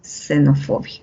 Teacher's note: en xenofobia al inicio de palabras suena como una s